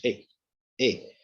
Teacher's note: A is short, A is unrounded